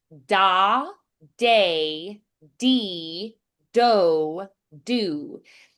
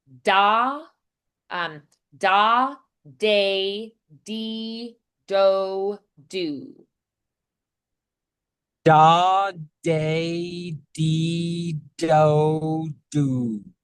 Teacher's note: you're going to feel this is a little more crisp. It's it's dental. It's it's very forward. Um so but the d is going to be a little more muted.